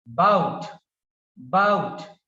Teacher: stress is given on the second syllable